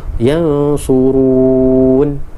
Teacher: Ra baris hadapan ataupun baris dhammah, bacaan tebal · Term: tafkhim